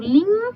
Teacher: Portanto, eu suprimo, eu não coloco esse N aqui, tá? Eu não tô escutando o N sozinho, eu tô escutando uma nasalização. · Eu estou escutando lim, então eu estou escutando um I nasalizado, então eu vou fazer esse I com tio.